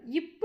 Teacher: மேலிதலும் கீழ் இதழும் பொருந்துவதால் பிறக்கும்